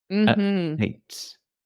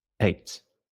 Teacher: it's a very short uh sound the t almost disappears eight I stop it in my throat